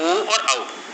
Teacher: जिन स्वरों के उच्चारण में होंठ जो होते हैं वो गोलाकार होते हैं या वृत्तमुखी होते हैं, तो ये उन्हें वृत्तमुखी स्वर कहा जाता है।